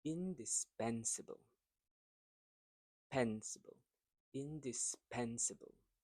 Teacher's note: So here the stress word is in the third syllable.